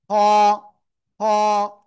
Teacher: গলার শেষ ভাগ থেকে উচ্চারণ করতে হবে মোটা আওয়াজে